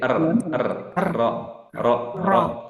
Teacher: sifatnya yaitu takrir, bergetar ujung lidahnya